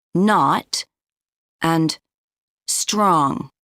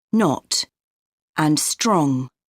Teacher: One of the most noticeable differences is the pronunciation of O. In North American English, O often sounds like ah or ah.